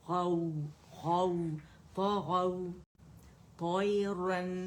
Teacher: واو لین ہے، فتح کے لیے آواز اوپر جائے گی، واو نرمی سے ادا ہوگا